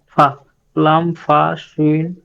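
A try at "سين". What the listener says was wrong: সিন, শিন বললে আবার আউলাই যাবে, সিন। উচ্চারণ কেন করি ভাই, সিন হবে তাহলে হবে সিন, সিন, সিন।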